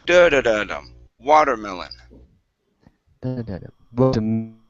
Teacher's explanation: So you want to stress at the very, very beginning.